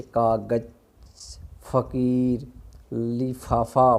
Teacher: इनके नीचे क्या है बेटा, नुक्ता लगाया जाता है, जैसे कागज, फ़कीर, लिफाफा। फ का जो उच्चारण करेंगे वो क्या रहेगा, कंपन से रहेगा, कंपन आता रहेगा उसमें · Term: आगत ध्वनियाँ